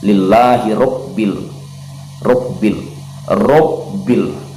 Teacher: Ingat juga ra ini ra ini ada sifat takrir, yaitu bergetar di ujung lidah. Jadi robbil, jangan robbil, jangan terlalu lemah, karena kalau kita lemahkan bisa terjadi lahzah, terjadi kesalahan dialek, bisa terdengar seperti hirobbil, hirobbil.